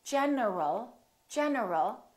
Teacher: my tongue is moving for the n and it's moving for the L